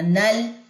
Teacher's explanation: نون مشدد کا غنہ کرنے کے بعد آپ نے نون کی زبر کو لام کے ساتھ ملانا ہے. جزم ہے یہاں پہ، سکون ہے، تو یہاں پہ کلکلا نہیں کرنا لام کے اوپر